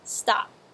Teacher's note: Then pulling it back, making a T sound. There is no release of air at all, and also make sure it does not resemble the D sound.